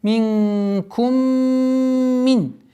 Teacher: Потом идет у нас назализация, полноценная ассимиляция с полноценной назализацией · Удержание назализации в размере двух огласовок